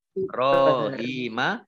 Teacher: ba sukun bacaan qalqalah ya, memantul.